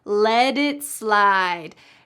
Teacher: Notice the pronunciation at the end of the word let. That t changes to a d.